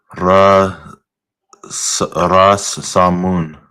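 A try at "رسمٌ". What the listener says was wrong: Okay, but say the long ah. Rasa. Rasamun. Rasamun.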